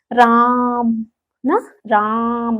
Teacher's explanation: राम उच्चारित करते समय देखिए तीन मात्राओं का समय लग रहा है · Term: प्लुत स्वर